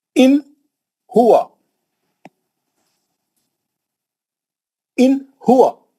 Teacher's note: اظہار بولتے ہیں نون کو جلدی پڑھنا، نون کو کھینچنا نہیں، نون کا غنہ نہیں کرنا